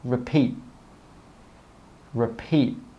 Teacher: We stop the air with that final T sound.